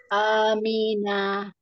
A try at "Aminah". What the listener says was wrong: Nah, tidak panjang. Ketika dia tidak asbab panjang, maka tidak boleh dipanjangkan. Jangan Amina. Itu panjang semua. Amina. Amina.